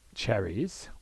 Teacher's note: cherry comes from cherries by removing the z sound at the end